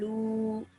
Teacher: wow becomes a vowel madda at the end. That's why you stretch that for 2 seconds at the end.